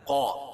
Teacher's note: وقال لهم نبيهم إن آية ملكه، وقال لهم، قا الف مدہ ہے، الف سے پہلے قاف کے اوپر زبر ہے تو الف مدہ ہوگا اور قاف کو پر پڑھیں گے